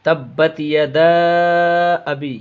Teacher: یدا کو کھینچنا ہے اس لیے کہ یہاں پہ مد منفصل ہے، الف مدہ، حروف مدہ کے بعد حمزہ جو ہے دوسرے کلمے میں ہے، یا ایک یہ بھی پہچان ہے کہ حرف مد کے بعد اگر حمزہ الف والا حمزہ رہے گا تو یہاں پہ مد منفصل ہوگا۔